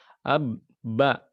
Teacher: Maka kita keluarkan dari tempatnya ba di dua buah bibir syafatan ya